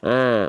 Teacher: hak kecil itu dilafalkan dari wastul halqi wastul halqi itu apa Bang wastul halqi itu artinya adalah tengah